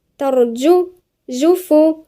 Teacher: الجيم من وسط اللسان